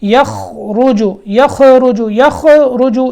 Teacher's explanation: خا موٹا حرف ہے لیکن یہاں خیال رکھیں کہ یہاں آواز میں حرکت پیدا نہیں ہونی چاہیے، یعنی قلقلہ یہاں قلقلے کی آواز نہ آئے.